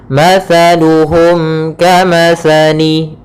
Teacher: Kemudian di sini ada mim mati bertemu dengan huruf kaf, maka kita namakan dengan izhar syafawi. Izhar syafawi, yaitu suara mimnya harus jelas dan tidak boleh ditahan